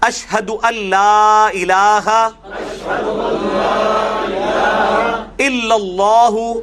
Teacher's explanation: یہ ان لا الہ لکھا جاتا ہے لیکن نون بیچ میں سائلنٹ ہو جاتا ہے. میں نے بتایا تھا نون ساکن تنوین کے بعد جب بھی یرملون، یا را میم لام واو نون میں سے کوئی آ جائے، اس میں سے خصوصاً لام اور را ایسے ہیں جو نون کو بالکل ختم کر دیتے ہیں، تو یہ ڈائریکٹ لام کے ساتھ ملے گا.